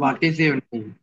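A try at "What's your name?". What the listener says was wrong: হোয়াট ইজ বলবো না, একটু ক্লিয়ার করো। ওয়ার্স বলো, ওয়ার্স your নেম, not হোয়াট ইজ ইউর। ওয়ার্স ইউর নেম, ওয়ার্স ইউর নেম।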